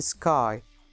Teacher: Next we have I diphthong. This diphthong begins with an open vowel which is between front and back. It's quite similar to the A sound and ends in the closed front position, as in sky.